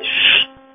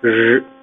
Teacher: Si vous le faites, ch, ça vibre pas, j, ça vibre.